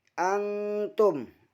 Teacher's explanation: Harusnya ikhfa hakiki karena nun sukun bertemu dengan ta. Nun sukun dibaca samar dan didengungkan selama 3 harokat.